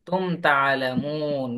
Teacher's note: মিম সাকিনের পরে তা ইজহার স্পষ্ট করে পড়তে হবে। তাআলামুন এখানে এক আলিফ মদের পরে হরফে অক্ফ আসার কারণে তিন আলিফ টেনে পড়তে হবে মধ্যে আর জি।